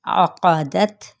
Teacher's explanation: عقدت، قاف کو پر پڑھا جائے گا، دا پہ تا پہ ہمس ہوگا